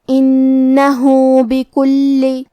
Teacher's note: کلمت انہو میں ہا پہ الٹا پیش ہے، یہاں حکم ہے مد صلہ صغرا، لہذا ہمیں اپنی آواز 2 مد کے برابر لمبی کرنا ہے